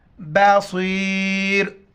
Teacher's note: صاد موٹے الفاظ میں سے موٹا کر کے پڑھیں گے